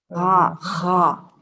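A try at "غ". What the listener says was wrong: Gha. Yeah, you see, you're confusing it with the kha. There is no kha sound. Kha is from here. Gha from here. Gha, gha, gha.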